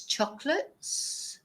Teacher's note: we don't even pronounce the O